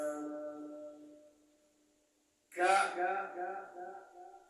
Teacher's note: کاف ادا کیږي د ژبې د ویښ او بره مقابل تالونه او د قاف د مخرج نه لږ خولې طرف ته په